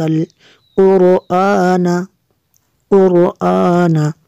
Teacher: قاف حروف مستعلیہ میں سے اس کو پر کریں گے